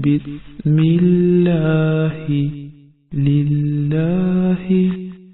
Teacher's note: लफ्ज़ अल्लाह से पहले अगर ज़ेर आ जाए तो उसके दोनों लाम की अदायगी बारीक की जाती है